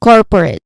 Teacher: Pronunciation wise, the main stress is on the first syllable core.